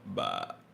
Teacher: you gotta just drop your voice low for third tone until it's like the bass voice